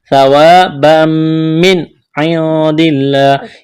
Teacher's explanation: کرنا ہے، الف مدہ ہے، ایک الف کے برابر کھینچنا ہے، تنوین کے بعد میم ہے تو یہاں پر ادغام کریں گے، غنہ بھی کریں گے